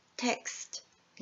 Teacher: も、母音と子音の使う量が違いますよっていうところがあります。例えて、言いますと、テキストっていう言葉がありますけれども、英語になるとテクストになります。テキスト、テクスト、はい、ちょっともう聞こえ自体も違いますけれども、発音をこうやって今下に上げますけれども、テキストになりますと、全部の子音の後に母音がついていきます。なので割と長い音になりますね。はい、変わって英語読みテクストになると、 テの後だけに母音がついていて、キスト、最後のところはですね、子音だけの音になります。